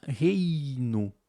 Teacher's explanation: Ela fecha, então a gente tem um ditongo que ele é decrescente. Não dá para você separar reino.